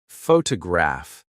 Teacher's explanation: photograph noun is stressed on the first syllable, but photograph I see adjective is stressed on the third.